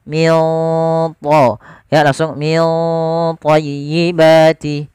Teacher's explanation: Kemudian pada lafal min thayyibati ada bacaan ikhfa. Nah, ini ikhfanya langsung ke huruf tha, ditebalkan, maka ikhfanya agak tebal